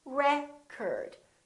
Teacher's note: if it's a noun it's pronounced as record the first syllable is stressed record this o changes so it's not oh it's a record